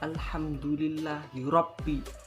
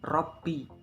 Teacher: Rabbi dibaca tafkhim ataupun tebal karena ada ro bertanda baca fathah. Rabbi, dibaca tebal.